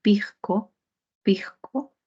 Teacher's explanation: La fricativa alveolar S se pronuncia como una J suave